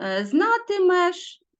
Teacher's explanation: ненаголошений е наближається до и